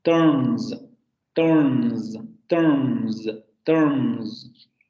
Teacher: esa S se pronuncie como el fonema alveolar fricativo sonoro, sobre todo en los plurales